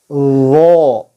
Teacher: Ciri khas Dzo adalah al-isti'la ', lidahnya terangkat. Kemudian al-itbaq, lidah juga menempel pada langit-langit mulut. Lalu ar-rakhawah juga, apa sebutannya, mengalir, ya, ketika itu sukun. · Artikulasinya sama dengan dzal. Ujung lidah menyentuh gigi depan bagian atas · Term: huruf dzo